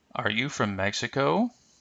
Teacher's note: notice how the intonation will rise but not fall at the end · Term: rising intonation pattern